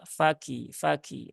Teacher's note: Kaf itu ada sifat hamsnya e maka keluarkan ya sifat hamsnya